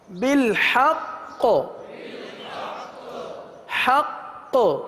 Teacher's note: وقف میں قلقلہ مشدد ادا ہوگا کیونکہ تشدید وقف میں باقی رہتی، ختم نہیں ہوتی، اس لیے یہاں قلقلہ ہوگا.